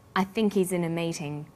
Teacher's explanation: the word think is stressed in this sentence